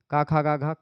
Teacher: क ख ग घ क वर्ण में पूरा का पूरा कंठ से है